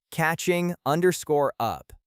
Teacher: make sure the G at the end of catching is very soft or dropped, and blend it directly into up